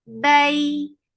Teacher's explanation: ya is lean, so when you are attaching fatha with ya, you're making it soft. Bayna for fatha upon jaws, the sound is short.